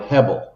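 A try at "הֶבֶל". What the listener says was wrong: Yes, hevel, with a V, H-E-V-E-L. Yeah, hevel.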